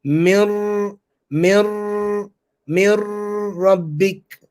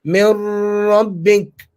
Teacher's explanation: So hold the tongue in the makhraj of ra and nasalize it. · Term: idgham with ghunna